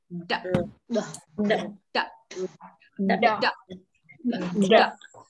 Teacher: Đờ thì đầu lưỡi lên chân răng và sau đó thì quay đầu lưỡi vào trong